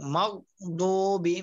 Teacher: মাগো না, কলকলা করা যাবে না